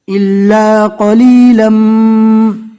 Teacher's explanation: دو زبر رکنے کی حالت میں الف مدہ بن جائے گا، إِلَّا قَلِيلًا۔